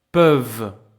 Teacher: The vowel is closed by the sound of the consonant v.